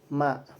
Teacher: Huruf mim dalam segi makhraj termasuk syafawi yaitu dua bibir. Kemudian tariqatul khudnya sama dengan huruf ee lam yaitu mutawasit antara pertengahan antara gesekan dan letupan.